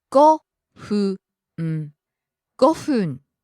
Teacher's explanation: Starts high, falls on the second syllable fu.